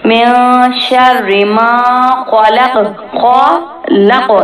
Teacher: خا کو موٹا پڑھیں گے، قاف کو بھی موٹا پڑھیں گے، لیکن یہاں پہ واف کی وجہ سے قاف جو ہے ساکن ہو جائے گا اور آواز پلٹ جائے گی.